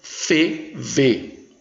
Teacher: Os lábios, eles vão ao encontro dos dentes superiores. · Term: Lábio dental